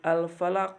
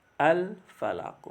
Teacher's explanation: Huruf qaf juga dibaca memantul pada kalimat al-falaq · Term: Qalqalah